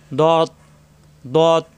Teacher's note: জিহ্বার গোড়ার কিনারা উপরের মারি দাঁতের গোড়া লাগবে, দত দত। ত, ত, মুখটা একটু গোল হবে, ত মোটা হবে, জিহ্বা উপরে 2 দাঁতের গোড়ায়, ত।